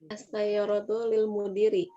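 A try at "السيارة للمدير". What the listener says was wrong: Ahsan. Milik ya.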